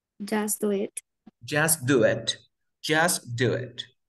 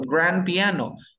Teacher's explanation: cuando yo tenga una T o una D entre sonido de consonantes, entre sonido de consonantes, esa T o esa D no se pronuncia